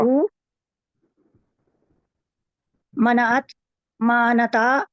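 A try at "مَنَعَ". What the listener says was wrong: मना नो, नून पहले है, ऐन बाद में है। मना आता,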